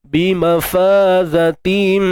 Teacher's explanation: Bima faman asli zatim, tanwin bertemu mim, idgham bi gunnah kamil IBG. Bima fazatim, dengung sempurna, tutup bibir, tutup sempurna.